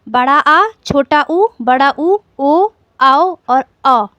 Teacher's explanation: जिन स्वरों के उच्चारण में जिभ्या का पिछला भाग सक्रिय रहता है, वे पश्च स्वर कहलाते हैं।